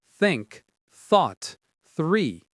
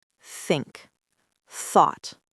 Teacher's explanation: And the th sound. That's the big one. Think. Thought. Three. You have to put your tongue between your teeth.